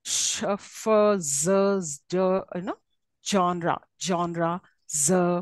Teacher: partial occlusion with frication noise I mean you will hear there's a kind of a friction